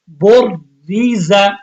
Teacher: تو اب ایک را کی حیثیت تو با کے ساتھ ملنے کی وجہ سے ساکن ہے۔ اب بر میں جو را آئے گا اس کو موٹا پڑھنا ہے، پھر اس کے بعد ری جو آئے گا اس کو باریک پڑھنا ہے۔